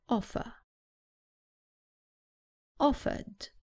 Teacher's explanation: in British English the r at the end is not pronounced so the last sound is an U offer offered another example